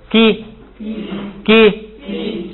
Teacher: 然后那个元音呢又是一个一，等于是2个一发起来就是长一点